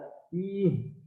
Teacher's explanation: H itu ada di rongga dada. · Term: huruf halqi